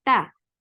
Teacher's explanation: a light ikhfa because ta is among light letters, and keep the sound in your nose. Don't pronounce a letter noon and go towards the makhraj of ta.